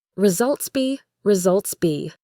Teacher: But the last part, results be in, has a nice connection. The s at the end of results has a z sound, resultsy, and that sound can link to the next word be.